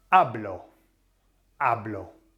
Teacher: the emphasis falls on the second last vowel which is the a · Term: nose rule